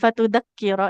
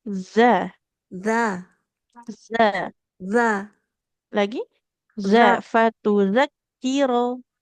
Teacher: huruf zal ujung lidahnya kita tempelkan ke ujung gigi seri yang atas